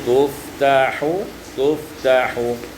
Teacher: iskanul fa wa takhfifut ta, disukunkan fa dan difathah dan tidak ditasdidkan huruf ta, maka menjadi tuftahu, tuftahu.